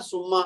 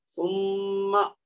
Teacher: دو حرکت تک لمبا کیا, غنہ کیا, ناک میں آواز لے کے, اور اس کے بعد زبر ہلکی سی ادا کرنی. زبر کو لمبا نہیں کرنا.